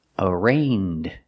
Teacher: so it's pronounced like rain with a long a a arraigned the first syllable is not stressed